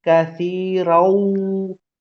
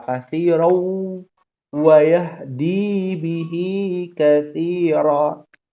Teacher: Tanwin ketemu waw ya, idgham bi gunnah. Ya, dia ada gunnahnya.